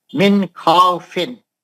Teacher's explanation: ہم نون کو جلدی پڑھیں گے، ہم نون کو نہیں کھینچیں گے، ہم نون کو لمبا نہیں کریں گے، ہم نون کا غنہ نہیں کریں گے، اور نون کو کلین پڑھیں گے جلدی. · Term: اظہار حلقی